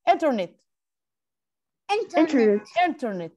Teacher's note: الضغطة بتبقى على أول مقطع على أول حرف إن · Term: word stress